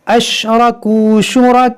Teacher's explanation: मद मुत्तसिल है, यानी इसको हम 3-4 के बराबर खींच कर पढ़ेंगे